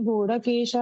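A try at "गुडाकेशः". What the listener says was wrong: ಗುಡಾಕೇಶ ಪರಂತಪ. ಗುಡಾಕೇಶ ಅಲ್ಲಿ ಗೂಢ ಅಲ್ಲ ಗುಡ.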